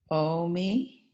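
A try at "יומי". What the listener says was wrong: Yomi. Yeah, do the yud at the end. Yeah, even though, because that vowel makes the yud pronounced. Yomi.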